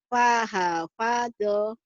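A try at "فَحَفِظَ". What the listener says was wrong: Nggak ada yang panjang deh, Bu. Fahafadha.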